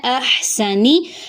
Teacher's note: ہا کو حلق سے ادا کریں گے، سین میں سیٹی آئے گی، نون کی حرکت لمبی نہیں ہوگی۔